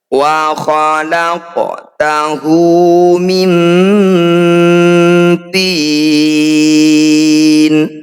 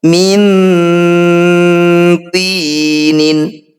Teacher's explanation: Nun sukun bertemu to disebut bacaan ikhfa, tepatnya yaitu ikhfa akrob, hurufnya ta, dal, dan to saja. Cara bacanya bunyi nun sukun kita dengungkan. Saat dengung, lisan kita sudah siap bunyikan huruf to.